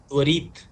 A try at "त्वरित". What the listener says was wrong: बड़ी की मात्रा नहीं है, छोटी की मात्रा है, छोटा लगाओ इसको। त्वरित।